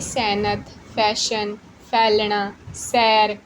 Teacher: ਐ ਦੀ ਆਵਾਜ਼ ਮਤਲਬ ਥੋੜੀ ਲੰਬੀ ਵਾਲੀ ਏ ਦੀ ਧੁਨੀ